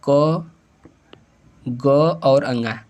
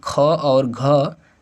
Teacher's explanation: क ग और अंग अल्प प्राण जबकि ख और घ महाप्राण है